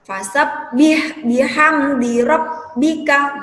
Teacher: Bacanya ditekan, huruf ba-nya ditekan, tapi tidak ditahan. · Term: tasydid